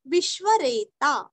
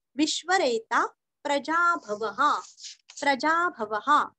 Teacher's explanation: उच्चारण आधाश, सुरेश, शरणम अनुस्वार का उच्चारण आधाम, शर्म शर्म, विश्वरेता रेता का ता पूरा बोल के विसर्ग का उच्चारण हल्का सा हो